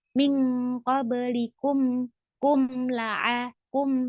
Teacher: Mim ketika sukun itu tidak dipantulkan ya.